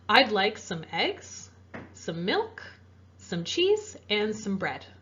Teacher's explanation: With a list in English, we also use rising intonation after each item except for the last one. So here we have eggs, milk, cheese, and then our last one we're going to have flat intonation, no rising or falling.